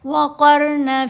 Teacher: اگر را ساکن سے پہلے زیر ہو تو پھر را ساکن کو باریک پڑھا جائے گا. ابھی قاف کے اوپر زبر ہے تو را ساکن کو موٹا پڑھنا ہے